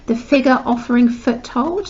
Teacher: Now that is a fricative alliteration, and it's quite a sinister sound, the fricative sound, because it's quite a hard one.